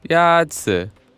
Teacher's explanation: The first tone is a high-level tone.